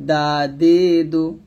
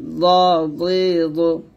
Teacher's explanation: দাল পাতলা হবে, জিব্বাটা উপর দাঁতের গোড়ায় লাগবে, আর দদ জিব্বার গোড়ার কিনারা উপরে মারি দাঁতের সাথে লাগবে।